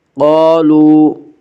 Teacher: قاف کو پر پڑھیں گے، قاف حروف مستعلیہ میں سے ہے۔ حروف مستعلیہ 7 ہیں جن کا مجموعہ خص ضغط نقز ہے، یعنی خا صاد ضاد غین طا قاف ذا۔